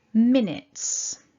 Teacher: we stress the first syllable and that blue dot in the middle tells us we divide